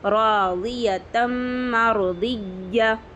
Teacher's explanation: या पे तशदीद है, यहाँ पे सख्ती करेंगे, और ज़बर है, या ज़बर की आवाज़ ऊपर को जाएगी, जल्दी पढ़ेंगे।